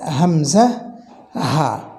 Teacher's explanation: কণ্ঠনালীর একদম শুরু থেকে এটি উচ্চারিত হয় কণ্ঠনালীর একদম শুরু বলতে এই নিচের দিক থেকে এটি বোঝানো হয়েছে